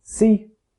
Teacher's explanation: The answer is that s in C is said with unrounded lips, because the vowel afterwards is unrounded, whereas the s in soup is said with rounded lips, because the vowel afterwards is rounded.